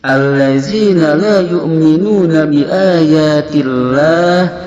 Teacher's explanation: Biayatillah, lafaz Allah ini hukumnya tarakik dikarenakan dia berada setelah kasrah, maka dibaca dengan bunyi a tipis, biayatillah. Sedangkan la ini mempunyai hukumnya mad ta'zim, panjangnya sama seperti mad jaiz munfasil 2-5 harokat.